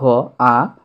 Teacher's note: এই আকে আবার নিম্নস্বরধ্বনি বলা হয় আবার কেন্দ্রীয় স্বরধ্বনি বলা হয়